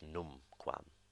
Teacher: num quam the first syllable being accented